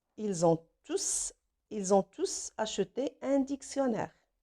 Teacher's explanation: S'il remplace un groupe de personnes ou de choses citées précédemment, comme les élèves apprennent le français, ils ont tous acheté un dictionnaire. Donc ici, tous, S prononce parce que c'est un pronom. Tous ici, il remplace les élèves.